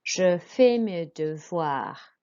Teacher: But for VOI, that makes a voix sound. So OI makes a wa sound in French.